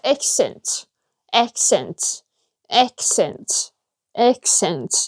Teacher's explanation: they don't pronounce the end of the word which is t